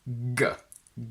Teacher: g is a velar sound, meaning that the back of your tongue goes up, hitting the velum or soft palate